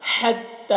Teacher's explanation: ہا کو حلق سے ادا کریں گے، اس کی ہا کی آواز ہوا کے ساتھ میں نکلتی ہے